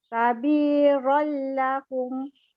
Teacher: Memasukkan tanwin ke dalam lam dan dibaca tanpa dengung. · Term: Idgham bila gunnah